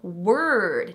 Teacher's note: The O in word is another R-colored vowel.